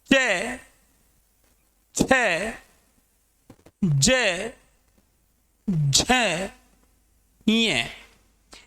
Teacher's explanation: इन्हें तालव्य व्यंजन कहा जाता है क्योंकि इनका उच्चारण स्थान तालु माना जाता है